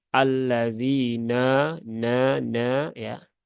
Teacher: Tapi dia zal, allazi, za, zi, zu, baz, allazina, nya dua harokat, nanya tipis ya. Ini huruf-huruf idlaq kadang seringkali terasa menebal